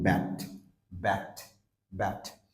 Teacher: তার মানে এটার দুইটা ঠোঁট লাগবে আলতো ভাবে, কিন্তু বাতাস বের হয়ে আসবে না